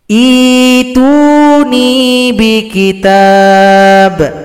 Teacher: Huruf ya harus dijadikan mad badal. Hamzah sukun kita ganti dengan ya supaya yang i bisa dipanjangkan. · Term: ibdal